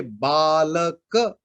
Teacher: अब आप कहेंगे बालक, तो बा में आ है और ल में अ है, तो अ में जितना टाइम नेचुरली आता है, आ में उसमें 2 टाइम्स ज्यादा होनी चाहिए। जो दीर्घ वर्ण है आ, ई, उ, ए, ओ, औ, इसको हम दीर्घ कहते हैं, मतलब यहाँ डबल यूनिट चाहिए।